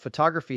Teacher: photography has stress on the second syllable